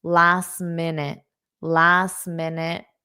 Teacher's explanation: you don't need to pronounce that T because it will force a pause